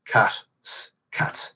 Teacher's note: You pluralize cat by adding an unvoiced S